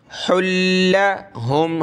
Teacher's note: कुल इस्लाहुल लहुम, इस साद को मोटा करेंगे, इस्ला, हमज़ा साद ज़ेर इस्लाम, अलिफ ज़बर ला, इस्लाहुल लहुम, हा को लाम के साथ मिलाएंगे, हा लाम दो पेश, हुल लाम ज़बर ला, हुल्ला, क्योंकि लाम पर ही तशदीद है तो लाम को सख्त करना है